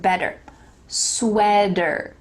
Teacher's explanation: There is a T, but like we talked about in American English, that T is going to change to a D, like the word better.